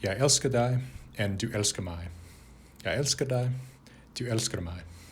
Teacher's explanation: There is a sort of musical tone to Norwegian and to Swedish that is not present in Danish.